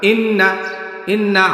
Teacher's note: আপনাদেরকে আবার দেখাই ই ধরে রাখলাম ইনা সাথে সাথে ছেড়ে দিবেন মানে এক আলিফ টান পরিমাণ টেনে তারপরে ছেড়ে দিবেন এটাকে বলা হয় গুন্না ইন্না ইন্না আম্মালামনা এইটা কিন্তু হবে না